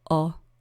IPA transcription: ʌ